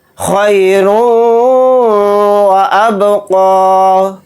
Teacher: والآخرة، را کو یہاں پر موٹا یعنی پر پڑھیں گے کیونکہ را کے اوپر زبر ہے، اور یہاں پر بھی را کو موٹا یعنی پر پڑھیں گے، اور را کے اوپر تنوین ہے، تنوین کے بعد واو آ رہا ہے تو اس میں ادغام کا قاعدہ ہو رہا ہے، یعنی واو پر تھوڑی دیر آواز کو روک کر ادغام کر کے پڑھیں گے